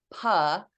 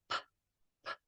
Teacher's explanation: modeling correct letter sounds so that we're not adding schwas